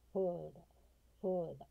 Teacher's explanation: 上の歯で下の唇を噛む▁F▁の発音。